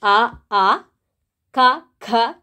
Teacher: ಕಂಠ್ಯ ವರ್ಣಗಳು ಅಂತ ಹೇಳಿದರೆ ಕಂಠದಲ್ಲಿ ಹುಟ್ಟುವಂಥವುಗಳು